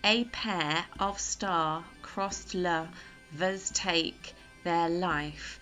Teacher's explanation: you're supposed to read it as an unstressed stressed syllable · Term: iambic pentameters